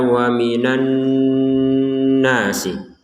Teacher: nun bertasydid ini wajib kita baca dengan dengungan 100%